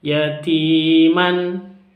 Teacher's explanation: ada ya sukun, terus huruf sebelum ya sukun kasroh, berharokat kasroh, maka disebut dengan mad tabi'i, panjang 2 ketuk